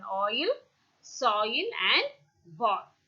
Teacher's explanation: the lips are slightly rounded at the beginning and are loosely spread at the end · and to the close direction so during the articulation of ah the glide begins at a point between the back open and half open position